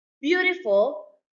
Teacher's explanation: Beautiful, stress on the first syllable.